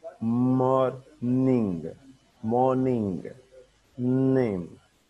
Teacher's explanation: इसको हम simply let the air flow through nose. वेलम को नीचे करते हैं, सॉफ्ट पैलेट को नीचे करते हैं और नोज से ये प्रोड्यूस करते हैं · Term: nasals